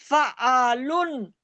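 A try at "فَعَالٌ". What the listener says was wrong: फ़अालुन, वक्फ करें। ला, ला ली लू नहीं है ना, लाम के ऊपर दो पेश हैं, इसको साकिन करना है, फा को खींचें और आइन को खींचें, लाम को साकिन करें। आइन को अलिफ के साथ है ना, अलिफ मद्दा है, आइन अलिफ जबर वाला जो साउंड है वो पढ़ें और लाम को साकिन कर दें।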